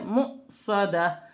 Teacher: اور حمزہ پر جزم کی حرکت ہے، اسے جھٹکے کے ساتھ ادا کیا جائے گا